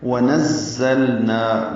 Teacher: وَنَزَّلْنَا، نون کو زا سے ملانا ہے، زا تیز صفیر کی آواز سے ادا کرنا ہے، لام ساکن پہ اظہار ہوگا، نا الف مدہ ہے، 2 حرکات لمبا ہے